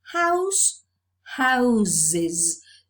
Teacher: the plural is realized by means of this consonant alternation where the voiceless sound consonant sound changes to a voiced consonant sound